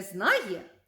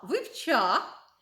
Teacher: коли ми маємо усічені форми дієслів і ми можемо почути не знає а зна